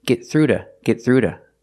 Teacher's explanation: so it's a fast D you hear · The T in get is a stop T, get, stop the air, and link to the next word, through, get through to her daughter. The T in to is between vowels, so it's a fast D.